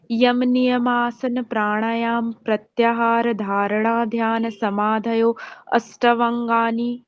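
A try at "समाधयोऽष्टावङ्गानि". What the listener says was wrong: अ नहीं बोलना। अ कहाँ लिख रखा आपने, देखा कहीं? स्किप हो गया। समाधयोष्टा। नहीं बोलना। समाधयोष्टा। स्टा।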